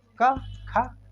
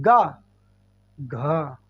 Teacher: का खा कम बज रहा है, लेकिन गा घ ऐसा लग रहा है बज रहा है, इसीलिए इनका नाम है साघोष।